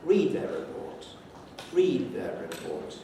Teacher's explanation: If you heard only their report, you could be certain there must have been a falling tone just before that. That's the only thing that would account for this, their report, at the end.